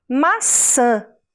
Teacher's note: o nariz vibrassem como se fosse um som pelo nariz maçã se você falar maçã encostando o dedo no seu nariz você vai sentir uma vibração · Esse som, que parece que sai pelo nariz, porque é o ar que sai por ali, é um som nasal.